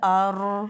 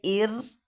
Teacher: अर उर दोनों पुर पढ़ने हो रहे हैं, जबकि इर हम इसको बारीक अदा करेंगे क्योंकि रा से पहले ज़ेर। अब देखिए हमज़ा रा ज़बर अर, हमज़ा रा पेश उर, यानी अर और उर दोनों पुर पढ़ने हो रहे हैं।